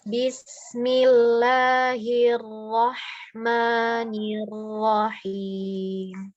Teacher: Ada lafzul jalalah yang tarkik ya, yang tipis.